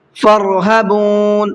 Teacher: را کو منہ بھر کے پڑھنا ہے